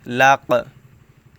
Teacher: এই কফ এখানে একটু বাড়ি খাচ্ছে বা ধাক্কা খাচ্ছে কারণ কফ হচ্ছে কলকলাহর হরফ সো কলকলাহর